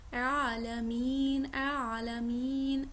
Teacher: منہ پورا کھولا ہے، ڈبل سا آئین کا ساؤنڈ نکل رہا ہے